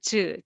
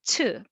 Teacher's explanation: soft and more aspirated so with lots of air